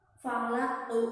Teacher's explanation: Qalqalah kalau akhir ini dinamakan qalqalah kubra. Jadi harus pantulannya itu terlihat ya.